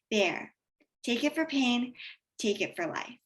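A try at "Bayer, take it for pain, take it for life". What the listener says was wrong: don't go down say bear again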